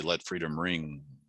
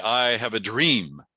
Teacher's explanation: meaning and then it dream is a nice finnish sound so it's got the open e but it comes to the close at an m